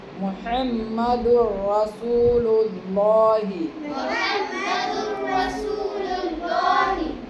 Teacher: یہاں پہ تنوین کے بعد را ہے، غنہ نہیں ہوگا